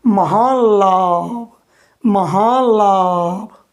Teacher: अगर न के बाद ल आए तो न का भी ल होता है, लेकिन उसके पहले वाले वर्ण पर अनुनासिक लग जाता है।